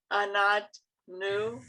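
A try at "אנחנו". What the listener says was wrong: It's a chet. I know it looks like there's a little leg, but it's a chet.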